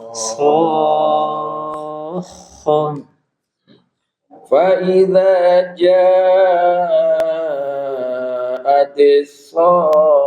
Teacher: jadi panjang dulu 6 harokat